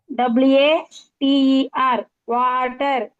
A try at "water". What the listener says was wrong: కాదమ్మా, అలా పలకకూడదు. సాగదీయకూడదు. ఇంగ్లీష్ ని ఎప్పుడు సాగదీయకూడదు. చిన్న పిల్లలు చెప్తుంటారు కదా, అట్లుంటది అది. ఎప్పుడు అట్లా సాగదీయకూడదు, స్పెషల్ గా చెప్పాలి.